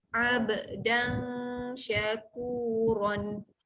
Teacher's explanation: Yang terakhir, okey, dibaca tanwin jumpa shin, tengah-tengah lidah naik ke atas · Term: ifa hakiki